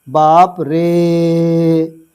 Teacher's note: जैसे हम बोले, एक हमने लिखा बाप रे, तो इसको कैसे पढ़ेंगे, बाप रे। तो जब हम रे पढ़ते हैं ना, तो काफ़ी देर तक पढ़ते हैं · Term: प्लूत